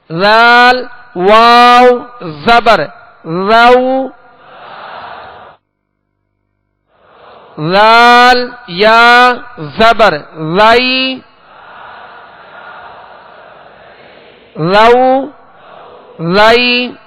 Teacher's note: تو ذال کا مخرج جو میں نے ابھی عرض کیا کہ سرا زبان اوپر کے سامنے والے 2 دانتوں کے اندرونی کنارے، اور نرمی کے ساتھ ادا کریں گے